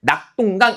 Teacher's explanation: 이 똥은 발음하는 과정에서 나타난 된소리